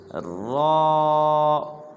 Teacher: نہ اس کو ر کرنا ہے نہ اس کو رو کرنا ہے، بلکہ اس کو موٹا کرنا ہے، نہ منہ گول کرنا ہے، بلکہ جب ہم اس کو اس کے مخرج سے ادا کریں گے تو یہ پوربی ادا ہو جائے گا اور ٹھیک طرح سے بھی ادا ہو جائے گا، جیسے را۔